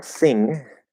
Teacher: With the front of the tongue, and then the back of the tongue, I call it the back N because it's basically an N sound, not an NG sound, but using the back of the tongue · And there's a little bit of a release there. There's not supposed to be a g that gets pushed out. · you don't push it out, you block it and let it go through the nose